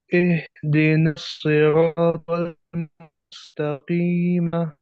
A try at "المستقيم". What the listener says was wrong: मुस्तकीम, जब आप वक्फ करेंगे तो मा नहीं पढ़ेंगे, मुस्तकीम।